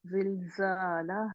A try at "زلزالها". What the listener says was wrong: नहीं नहीं, हा को करे ना, आपने लंबा नहीं किया इसको। जिल्जा, जा मोटी रहेगी कि बारीक रहेगी, जबर वाली, बारीक रहेगी। जिल्जा आपका स्माइली मुंह होना चाहिए, मुस्कुराने वाला। जिल्जालहा, अगर आपने जा जालहा कर दिया तो वो तो पीछे से जुबान भी उठ गई आपकी, ठीक है। डजंट मैटर, अलिफ है तो आपने खींचना है उसको,